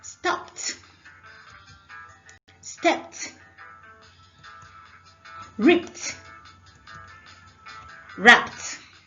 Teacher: Ed after p sounds t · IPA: /stɒpt/